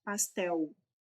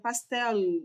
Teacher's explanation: algumas regiões do Brasil, boa parte delas, inclusive, fala este L com som de U